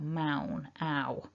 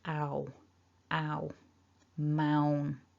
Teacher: So those two, there are technically two vowel sounds happening, but they happen together as a double vowel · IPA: /aʊ/